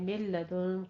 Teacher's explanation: पहला नून साकिन है उसके बाद लाम है, तो इदगाम बिला गुन्ना करना है